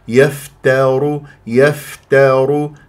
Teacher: البعض يقول يفترون يفخم التا لمجاورتها للراء والراء مفخمه لانها مضمومه فيقول يفت وهذا غلط يفتر يفتر هكذا بهذه الطريقه يف يفترون